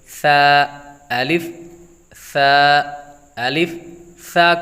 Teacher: ایک تو تلفظ کی ادائیگی کا خاص خیال رکھنا ہے، جس طرح کہ ثا، الف، ثا، الف، ثا کو ثا پڑھنا ہے، سا یعنی سیٹی کی آواز نہ ہے، ثا کو ہمیشہ نرمی کے ساتھ پڑھا جاتا ہے، ثا کو ادا کرتے وقت اس کے اندر سیٹی کی آواز نہیں آنی چاہیے